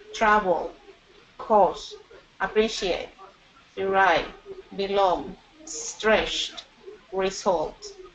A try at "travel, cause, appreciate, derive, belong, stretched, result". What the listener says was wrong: All of them were good.